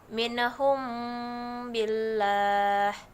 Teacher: lalu contoh selanjutnya mint home Billah mim mati bertemu dengan baik penekanan pada bibir disamarkan tapi didengungkan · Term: Ikhfa Syafawi